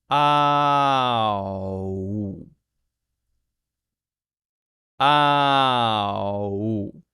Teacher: This is starting with the ah, ah, ah, ah, ah, ah, and ending with the woo, woo, woo. So it goes from ah to oo, but it has to go smoothly. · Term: diphthong